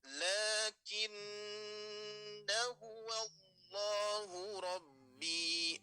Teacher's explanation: Maka tanda bulatan di atas alif itu menandakan bahwa madnya tidak usah dibaca panjang, melainkan diabaikan